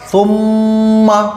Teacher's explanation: اب اگر آپ اس کو ایسے پڑھ دیں، ثم ثم، سا میم پہ ثم، میم زبر ما، ثم، تو چونکہ میم پر تشدید لگ رہی ہے اسی لیے یہاں پر غنہ ہوگا، یعنی میم کی آواز کو ناک میں رک کر پڑھا جائے گا